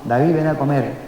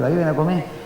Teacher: A mí me llama la atención mucho, por ejemplo, cómo desaparece muy frecuentemente en Gran Canaria la consonante de final de sílabas